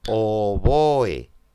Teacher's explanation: Oboe, palabra llana, ya que oe forman hiato, están en sílabas distintas, llana y termina en vocal y por lo tanto no lleva tilde.